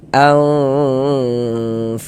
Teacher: suaranya itu kita tahan, kita panjangkan sejenak. Nah, kira-kira sepanjang 2 harokat kita gunnahkan, kita dengungkan